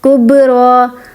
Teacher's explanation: با پہ کے اوپر جزم ہے تو اس کو ہم کلکلا کریں گے